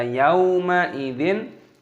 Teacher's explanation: kasrah tanwin bertemu dengan alif, idhar halqi dibaca jelas, tidak boleh didengungkan.